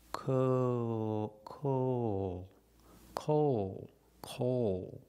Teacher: The long O, co, when it connects to the dark L at the end, the long O changes a little bit.